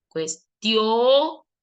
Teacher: la O es la que suena más, no la I.